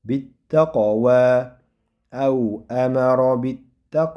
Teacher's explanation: Shu yerda qof sukun bilan bo'ldi. Buni qalqala qilamiz.